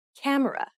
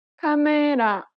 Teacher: each syllable is pronounced for the same amount of time and gets equal stress.